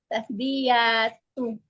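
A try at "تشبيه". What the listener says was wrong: Enggak pakai iya. Ahyanya mati sukun.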